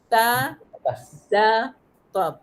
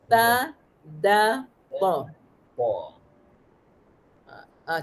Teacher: Lepas tu yang ke-11, hujung lidah ditekankan ke pangkal gigi atas.